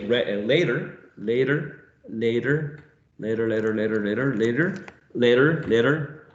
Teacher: a sound that is quite common in general American right the use of a flap